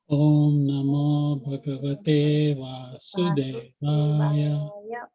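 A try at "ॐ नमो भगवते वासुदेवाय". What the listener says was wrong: It's like one word. It's not Om Namo Bhagavate. It's not two separate. Om Namo Bhagavate Vasudevaya. And remember also this air at the end, tear, this tear here, the Sanskrit A, I, O, R, they're all dirgha vowels. So even the air is long also.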